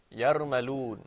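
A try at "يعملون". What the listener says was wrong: Okay, excellent. Very good.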